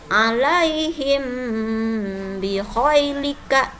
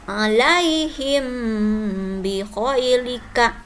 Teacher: Cara membaca ikhfa sapawi ini harus didengungkan. Bacaannya di bibir.